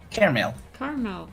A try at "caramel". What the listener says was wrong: No, caramel. It's caramel. You sound like you're saying airmail, but you're saying caramel. It's caramel. It's mail. Cara. Caramel.